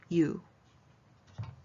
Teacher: you are adding a y in front so it just becomes u